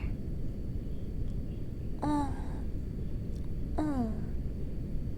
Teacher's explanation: This is our first nasal vowel. It's like the French in bon.